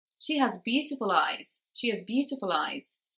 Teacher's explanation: where these words are pushed together we can actually even create a new word beautiful lies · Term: connected speech